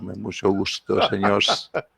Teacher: Como le mencionaba, hay una que se está perdiendo, que solo la gente adulta la mantiene, y es la S sibilante, que le llamamos. Una S que es como silbadita